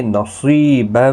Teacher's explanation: صاد مستعلیہ ہے، یا مدہ بھی ہے، ایک الف کی مقدار کے برابر کھینچ کر بھی پڑھیں گے